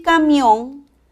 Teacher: la mayor fuerza de voz está en la última sílaba termina en N es una palabra aguda y debe de tildarse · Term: acento prosódico